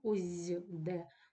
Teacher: д дзвінки впливає на попередній глухий с і робить його теж дзвінким і коли ми вимовляємо ось з де в нас теж чується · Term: асимілятивний процес, звук зь